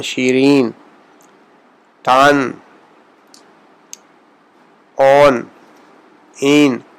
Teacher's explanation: فارسی میں نون کی آواز جو ہے وہ اردو کی نسبت زیادہ ہم اس کو کھل کر ادا کرتے ہیں، اور یہ جیسے پہلے عرض کیا تھا، اس کا تلفظ جو ہے انگریزی کا لفظ اگر SON ہو تو وہ زیادہ مناسب، اس کے زیادہ قریب آ جائے گا۔